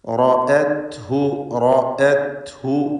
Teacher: റാ പൂർണ്ണമായ തഫ്ഖീം ചെയ്യേണ്ട അവസ്ഥയാണ് മഫ്തൂഹായതുകൊണ്ട്. തടിപ്പിച്ച് റാഇനെ ഉച്ചരിക്കുക.